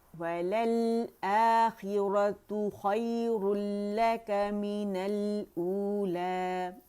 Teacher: اقصى الحلق سے حمزہ کی آواز نکلے گی